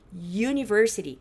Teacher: o primeiro som dessa palavra não é som de vogal, é um som de i